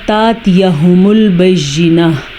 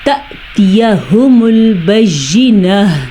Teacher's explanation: یہ تاتیہ نہیں ہے، تا کے ساتھ حمزہ کے اوپر آپ کو ساکن نظر آ رہا ہوگا، تو یہاں پہ جھٹکے کی کیفیت بنے گی، بجائے اس کے کہ ہم تاتیہ پڑھیں گے ہم بالکل غلط پڑھیں گے، ہم نے پڑھنا ہے تأتیہم البینہ، ٹھیک ہے۔ تا کے بعد حمزہ ساکن ہے تو ایک جھٹکے کی کیفیت پیدا ہوگی